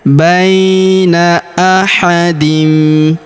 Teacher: huruf ba kita ayun sekali karena terdapat ya sukun di depannya.